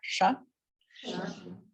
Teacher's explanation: So we've got palatal, we're pulling back. So we got sh, and then retroflex the roof of the mouth, sh, and then sa, and then ha.